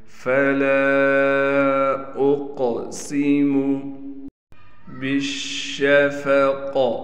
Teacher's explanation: قاف کو موٹا بھی پڑھیں گے اور قاف پر قلقلہ بھی کیا جائے گا